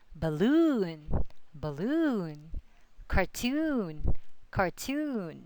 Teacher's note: the suffix OON always has the accent on it.